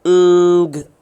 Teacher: आपका जो back of the tongue है ये जाके सॉफ्ट पैलेट को टच करती है और उससे ये पैदा होता है, और इसीलिए सॉफ्ट पैलेट को हम वीलम भी कहते हैं, VELUM, वीलम। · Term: एंगमा